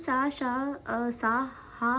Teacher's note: तो जो अंतस्थ व्यंजन है वो अल्प प्राण की श्रेणी में आते हैं, और जो ऊष्म या संघर्षी व्यंजन है वो महाप्राण की श्रेणी में आते हैं। तो जो सा हा है ये महाप्राण में आएगा, क्योंकि ये ऊष्म और संघर्षी व्यंजन है